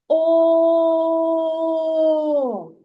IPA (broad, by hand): о